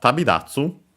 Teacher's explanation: Notice the voicing becomes da, because it's the second part of a compound, and it's of strictly Japanese origin.